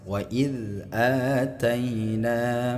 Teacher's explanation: jadi a-nya dipanjangkan dua harakat adapun hukum bacaannya di sini adalah mad badal ya walaupun harakatnya sama seperti mad thabi'i tapi hukumnya berbeda.